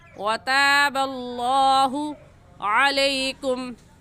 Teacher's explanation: लफ्ज़ अल्लाह से पहले पेश आ गया है तो लफ्ज़ अल्लाह को मोटा करेंगे